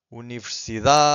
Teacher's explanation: the final syllable, the last one, it's very weak. It's not silent, but it's very weak. It's hard to hear.